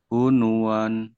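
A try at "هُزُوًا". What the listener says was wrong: Hunuan. Bukan nun ini. Zai. Kalau nun bukan begini. Zai ini. Zai ya. Nih, kalau nun kan gini tuh titiknya ada rumahnya. Ini kan ke bawah. Cuman tulisannya begini ya. Harusnya kayak ro ya. Ini gitu. Tapi ini zai. Huzuan ya.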